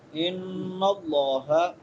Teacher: نون مشدد آ گیا ہے، تو نون مشدد پہ کیا کرتے ہیں؟ غنہ کرتے ہیں. یہاں پہ غنہ ہوگا، ایک الف کے برابر لمبا کریں گے.